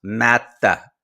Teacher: you have to pause in between the two syllables